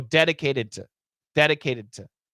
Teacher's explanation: that t becomes a flap t and it says dedicated · that ending D and the next word to those two sounds are gonna blend together